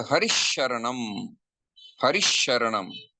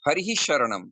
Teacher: So you can either say Harihi Sharanam or Harisharanam. So Harisharanam means the Visarga got converted into Talavyasha